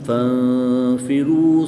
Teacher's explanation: نون ساکن کے بعد فا حروف اخفا میں سے ہے تو یہاں بھی غنہ زمانی کر کے پڑھیں گے